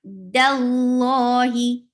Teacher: make sure that the dal should stay light, and lafz jalala is heavy here